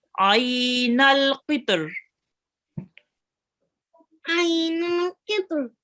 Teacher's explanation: Now here we have a ya lean, so we will be just prolonging it for 2 seconds.